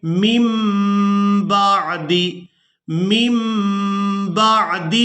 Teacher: तो यहाँ नून साकिन को हमने मीम के साथ बदल देना है। पहली मीम को दूसरी मीम के साथ मिलाकर अदा करेंगे